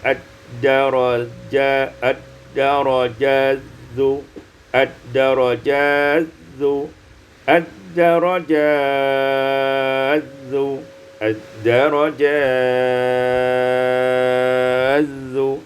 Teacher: Pada ayat yang ke-15, ad-darajatu, ad-darajatizu, idghamut ta fi zal, diidghamkan ta pada zal